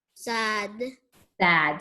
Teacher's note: If it's a short A, it's going to say ah.